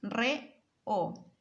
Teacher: De la palabra reo tenemos dos vocales separadas